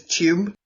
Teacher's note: I always associate with the glide in there as being a British accent. That's like one of the markers for me is tube.